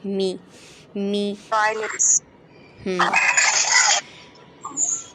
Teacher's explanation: یہ شفاتان لیٹر ہے جو کہ ہونٹوں سے ادا ہوتا ہے، دونوں ہونٹوں کو باہر کے پورشن کو جب ہم ملاتے ہیں تو میم ادا ہوتا ہے